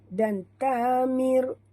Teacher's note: bunyikan safir pada huruf sin yang mati